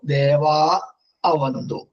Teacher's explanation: ആകാര വിസർഗത്തിന് ശേഷം ഏത് സ്വര അക്ഷരങ്ങളായാലും ആ വിസർഗം ലോപിക്കുകയാണ്. അപ്പൊ ദേവാ അവന്തു എന്ന് കൂട്ടി വരുമ്പോ ദേവാ അവന്തു.